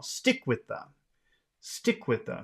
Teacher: So stick becomes very big, with the becomes very small.